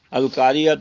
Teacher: اس سورہ مبارکہ میں آپ غور کریں، دیکھیں القاریہ تو ملکاریہ تو چھوٹی گول تا ہے اور اوپر پیش ہے. تو گول تا کا معاملہ یہ ہے کہ اس پہ اگر وقف کیا جائے تو یہ گول تا ہا میں بدل جاتی ہے